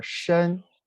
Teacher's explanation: The pronunciation is shen, the first tone.